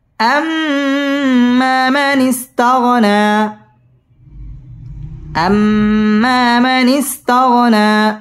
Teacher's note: همزة ميم زبر أم، ميم ألف زبر ما، أما، أما، ميم زبر ما، نون سين جرنس، مانس، أما مانس، تا غين زبر تغ، نون خلا زبر نا، تغنى، أما من استغنى، أما من استغنى। আম ওয়াজিব গুন্না, এখানে গুন্নাহ করে পড়তে হবে